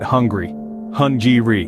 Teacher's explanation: the G sound in this word is a bit more subtle nestled between the n and the r